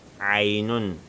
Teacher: Le ain, ça se prononce avec un son qui provient de la gorge.